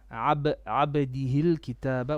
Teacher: Try to do a bit of qalqala on your ba.